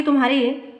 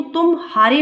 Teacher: कुछ व्यवधान होता है उदाहरण के लिए तुम्हारे के उरण में म के पश्चात ह पर शीघ्र संक्रमण होता है किंतु तुम हारी में पूर्ववत संक्रमण नहीं होता म और ह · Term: संगम